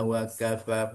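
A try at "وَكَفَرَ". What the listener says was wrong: Hurufanya tadi agak ee dibacanya agak dirapatkan bibirnya.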